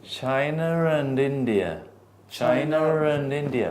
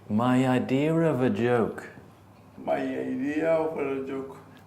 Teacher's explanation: And now I'm saying sometimes when there is no R, you say an R. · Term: intrusive R